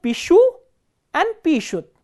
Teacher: So, here the stress is on the ending. The ending is stressed and the stem ends with a consonant sh.